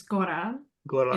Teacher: you say it with the tapped R